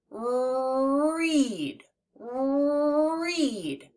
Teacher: we curl the tip of our tongue slightly upwards towards the roof of our mouth, but we don't actually let it touch the roof of our mouth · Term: R sound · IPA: /r/